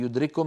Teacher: لاحظوا بأن الكاف في يدرككم من المتماثلين، التقى كاف وكاف، كاف وكاف، فالكاف الأولى ساكنة فأدغمناها في الثانية فصار النطق بكاف مشددة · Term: الإدغام الكامل